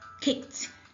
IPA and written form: kɪkt (Kicked)